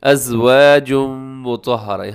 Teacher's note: ادغام ہو رہا ہے تنوین کے بعد میم حرف یرملون کا